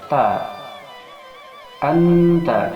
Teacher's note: Yang makharijul huruf ta ini adalah di ujung lisan dan disentuhkan pada pangkal gigi seri yang atas, yaitu tempat tumbuhnya gigi seri yang atas.